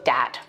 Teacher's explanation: using something like a d sound for where you see a written th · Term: th stopping